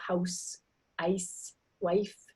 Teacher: The ow and the I sound, before these voiceless sounds or sounds like s and f, they get raised, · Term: Canadian raising